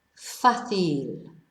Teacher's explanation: the accent on the first A, or the only A in fácil, tells us to stress the first syllable